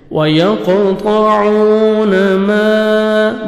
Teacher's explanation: الف مدہ کے بعد 3 سے 4 سیکنڈ ایکسٹرا آپ نے مد کرنی ہے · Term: مد جائز